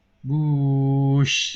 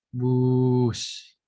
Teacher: Meskipun yang S-nya malah lebih powerful ini ya, karena ingin kedengaran. Kalau yang sebenarnya kan orang bilang bush itu S-nya pelan.